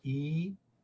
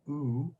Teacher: that the farthest back and the highest it possibly could be so we call e a high front vowel and we call ooh a high back vowel